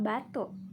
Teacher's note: bunyi hambat bilabialnya itu bersuara